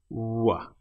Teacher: The W sound, your lips are close but they're not actually touching. W. It's more like a soft vowel sound.